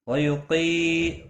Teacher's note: قاف موٹا پڑھا جائے گا، یا مدہ بھی ہے، ایک الف کے برابر کھینچ کر پڑھیں گے